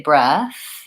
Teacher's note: We do kind of stop the air. If I just say breath, I'm going right from the vowel into the TH, and that word just flows.